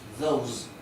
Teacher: coloca una Z al final porque se pronuncia zumbado